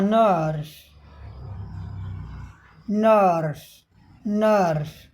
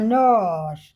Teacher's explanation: यानी स्वर ही लंबा हो गया बीच का ब्रिटिश में